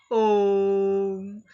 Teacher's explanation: जैसे हम ओम शब्द का उच्चारण करते हैं तो ओ के ऊपर हम कुछ लंबे समय तक जोर देकर के बोलते हैं, ओम। तो ओ वर्ण पर हमने और वर्णों से ज़्यादा जोर दिया। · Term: प्लूत